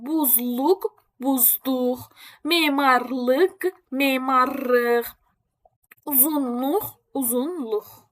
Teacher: L şəkilçisi tələffüz oluna bilər dıq, rıq və nıq formasında